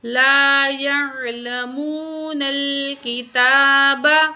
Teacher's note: تا کے اوپر کھڑی زبر ہے 1 کاؤنٹ کھینچ کے پڑھیں گے